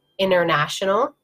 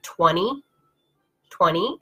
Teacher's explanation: So it's this, when we have these combinations of N's and T's together in a word, that often native speakers will just pronounce the N and not pronounce the T.